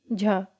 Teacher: तालव्य महाप्राण घोष वर्ण का उदाहरण कौन सा है?